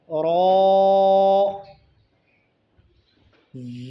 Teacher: ज़ुबान का किनारा मा पुश्त ऊपर के चार दांतों के मसूड़ों पर लगाने से रौ अदा होते हैं। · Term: रौ का मखरज